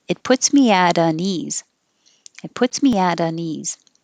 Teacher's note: i'm going to change that t to a d